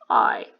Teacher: When you say I, what happens that your jaw opens up and your tongue is, it's sort of in the center. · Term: diphthong